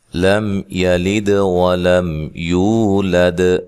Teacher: لم یلد ولم یولد، یہاں میم کو ہلانا نہیں ہے، اور یہاں میم ساکن کا اظہار ہے، غنہ نہیں کریں گے۔ یلد دال پہ قلقلہ کرنا ہے، ہلا کر پڑھنا ہے۔